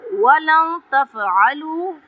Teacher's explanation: ولن نون ساکن کے بعد تا رہا ہے، یہاں پہ اخفا ہوگا